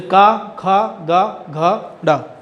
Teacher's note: कंठस्थ व्यंजन जो है वो कंठ से ही बोले जाते हैं